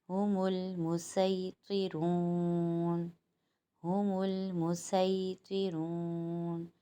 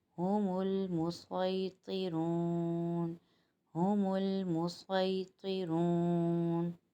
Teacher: اگر ہم سین پڑھیں گے تو ادائیگی باریک ہوگی، صاد پڑھیں گے ادائیگی موٹی ہوگی